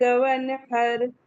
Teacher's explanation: نون ساکن کے بعد یہاں پہ ہا آیا ہوا ہے، تو ہم سمپل کوئی غنہ کوئی اخفا کچھ نہیں کریں گے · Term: اظہار